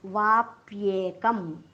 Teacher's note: कवर अनुस्वार आहे, अनुस्वाराच्या पुढे आलेला आहे प, म्हणून प वर्गातलं सर्वात शेवटचं अनुनासिक प फ ब भ म आपल्याला अनुस्वाराच्या ऐवजी उच्चार करायचा आहे. उच्चार होणार आहे वाप्येकम. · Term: अनुस्वाराचा उच्चार